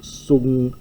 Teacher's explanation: The gamma here is a guttural nasal, and you need that before the guttural, so it's the nu turns into a guttural nasal before the guttural chi.